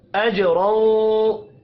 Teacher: जीम साकिन पर कलकला करेंगे, रौ को दो जबर की वजह से पुर पढ़ना है